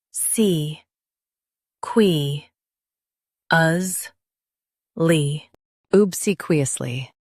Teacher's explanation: Stress C and keep qui light.